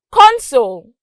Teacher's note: notice that there was a rise con and then there was a drop when i said soul